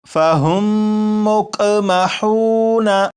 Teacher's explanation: تو پورے قرآن پاک میں اگر کسی بھی لفظ میں آپ دیکھیں کہ میم ساکن ہو، میم ساکن کے بعد دوسری میم ہو تو وہاں پر غنہ کر کے ہی پڑھیں گے۔ اسی طرح یہاں پر دیکھیے گا یہ ہے میم کے اوپر جزم ہے، جب میم کے اوپر جزم ہے تو یہ میم ساکن ہے۔